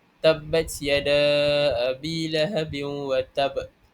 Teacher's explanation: Qalqalah akbar ini ialah lantunan yang paling kuat iaitu dan tandanya ialah wakaf pada qalqalah yang bertasydid